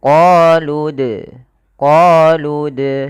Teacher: Maka qoluana kemudian pada lafal dal sukun di sini ada bacaan kita namakan dengan qalqalah. Dalam pelafalannya kita harus memantulkan dalnya